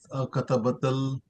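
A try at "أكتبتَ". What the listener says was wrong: Akatabtal. Akatab. You are putting a fatha on ba. No. Akatabta.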